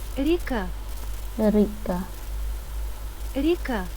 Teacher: When not stressed, we pronounce the letters ya, as a short e.